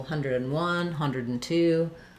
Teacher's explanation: All right, so if I'm saying, for example, 101, 102, you can hear my and is very reduced. I'm not saying 101, 100 and.